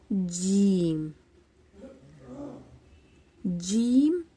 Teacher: वसत जबान और ऊपर का तालुक उससे अदा होता है वसत जबान जबान के बीच वाले हिस्से से अदा होता है